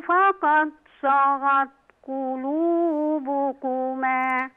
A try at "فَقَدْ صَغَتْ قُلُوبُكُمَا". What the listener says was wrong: من قلق للدال بقى؟ فقد صغت قلوبكما.